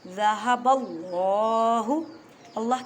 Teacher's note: اللہ کے لفظ کی لام کو موٹا پڑھیں